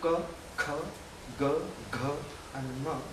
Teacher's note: Ka, when you have in that group ka, kha, ga, gha and ma, these 5 sounds coming from the same position where the root of the tongue is coming into contact with the soft palate